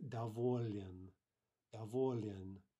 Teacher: You've got that kind of tricky cluster at the end of the word. We bring in a mobile vowel to split up the cluster, but we do keep the L soft, right? So our mobile vowel is going to be yeah, and that gives us davolin, davolin.